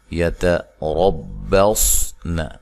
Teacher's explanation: تا کو باریک، را کو موٹا، صاد کو موٹا، ٹھیک ہے، نون کو لمبا نہیں کرنا۔